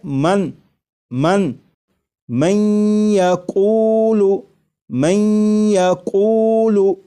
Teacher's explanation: یہاں پر دیکھیے گا یہ نون ساکن ہے، نون ساکن کے بعد جب یا آ جائے تو نون ساکن کو یا میں ادغام کر کے پڑھیں گے، ملا کر پڑھیں گے، اور نون ساکن کو یا میں ادغام اس طرح کریں گے کہ غنہ بھی ہو